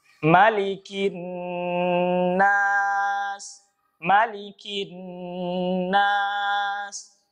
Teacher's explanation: Huruf mim pendek, ya. Berbeda dengan surah Al-Fatihah, mimnya panjang, ya.